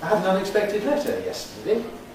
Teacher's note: Putting our sort of subordinate rising tone on the yesterday.